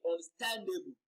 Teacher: understand is a compound verb and the compound verb is always stressed on the second word so stan is receiving the stress and a bull is that suffix ableism should not be stressed